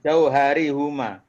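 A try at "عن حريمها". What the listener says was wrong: Bukan huma, jauh hari hima. Karena dia mudhof ilaih. Jadi kalau huma, kata huma itu ya jadi mudhof ilaih atau sebelumnya itu huruf jar, maka haknya dibaca hi, Pak. Jauh hari hima, bukan jauh hari huma, bukan huma lagi tapi hima.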